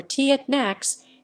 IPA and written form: təˈnax (Tanakh)